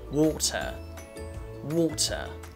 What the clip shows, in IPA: wɔ́ːtə